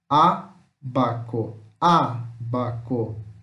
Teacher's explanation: Como o acento está no A, essa sílaba é mais forte. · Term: proparoxítona